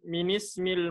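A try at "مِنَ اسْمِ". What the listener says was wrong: Yang lebih tepat minasmil. Bukan minismil. Minasmil. Kaidahnya gimana? Min kalau setelahnya sukun, kaidahnya gimana? Fathah ya. Jadi bukan minismil, tapi minasmil. Mina.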